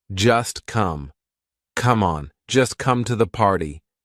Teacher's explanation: just is followed by come. So that t is in between two consonants. It's in between the s and the c of come. So we're going to make it silent.